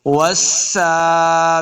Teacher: سین کے اوپر کھڑی زبر، اس کو 2 حرکات لمبا کریں گے۔